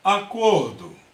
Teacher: uma sílaba tônica é a penúltima é uma paroxítona